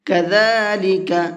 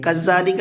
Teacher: ذال کو بہت نرمی کے ساتھ میں پڑھیں گے، اور اس کے پروناؤنسیشن میں، اس کے ساؤنڈ میں سیٹی ذرا سی بھی نہیں ہوتی ہے